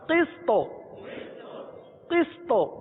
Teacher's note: قسط تی نہیں قسطی نہیں قسط آگے وقف قسط قسط کیونکہ آخر میں تو ہے تو ساکن پہ قلقلہ ادا ہوتا ہے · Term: قلقلہ صغرا